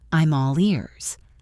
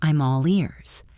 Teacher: I am all ears. Connect the M of am to all.